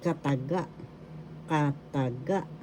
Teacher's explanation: The third syllable has the accent.